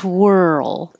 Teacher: you can start with your lips in a rounded position because you're going to have a w